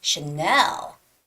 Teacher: when you say that name of that luxury brand Chanel the stress goes on the second syllable so it's not Channel or it's not Channel or it's not